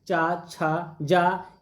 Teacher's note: चा, छा, जा, ये सभी क्या हैं? स्पर्श संघर्षी व्यंजन हैं।